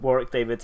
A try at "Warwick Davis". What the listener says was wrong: You even got his name wrong. You called him Warwick David. You said David. Warwick David.